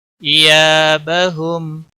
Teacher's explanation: वक़फ़ की सूरत में मीम साकिन ही रहेगा।